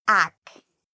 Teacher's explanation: the AC actually has a K sound, and it's the part we say louder and longer. It's the stress.